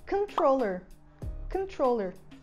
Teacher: A sílaba tônica é tro, então a primeira sílaba vai vir com o som de vogal do schwa